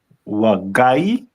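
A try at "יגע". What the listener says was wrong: First letter is gonna be, it's not wa. Yagai.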